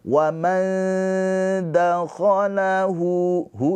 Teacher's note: Mad silah qasirah dibaca panjangnya dua harakat.